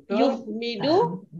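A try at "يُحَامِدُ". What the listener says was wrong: Hamidu ada alif. Hamada kan ada alif tambahannya.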